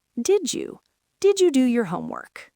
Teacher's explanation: When a word ending in a D crashes into a word starting with a Y, they merge to create a J sound like the J in jump.